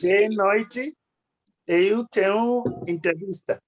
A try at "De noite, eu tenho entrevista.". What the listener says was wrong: Yes, exactly.